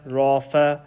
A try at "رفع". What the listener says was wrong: It's not rafa. There's no alif. Rafa'a. Soften the ain.